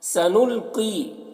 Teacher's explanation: قوف کو پر پڑھیں گے اور یہاں پر یا مدہ ہے، ایک الف کے برابر کھینچ کر پڑھیں گے